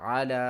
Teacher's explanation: عین کو ہم نے حلق کے درمیان والے سے ادا کرنا ہے